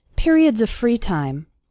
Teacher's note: the word of runs into the word free